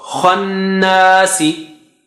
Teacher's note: So n has double stretch. Na has double stretch.